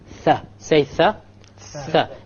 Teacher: Notice the tongue will be outside of the incisors by a millimeter if you like. Tha. Say Tha.